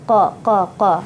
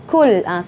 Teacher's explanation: makhrajnya huruf qaf ya, makhrajnya di pangkal lidah, qa qa qa ya, jangan kul, qul jadi kaf.